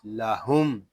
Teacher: لام زبر لا، ہا میم پیش ہم، لہم۔ لام کو ہم کھینچ کر نہیں پڑھیں گے کیونکہ لام کے اوپر حرکت ہے